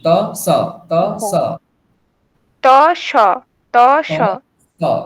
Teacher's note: দেখুন সকারটা কোথা থেকে উচ্চারণ হওয়ার কথা? দন্তে থেকে, মানে দন্ত দন্ত থেকে। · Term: দন্তস্ব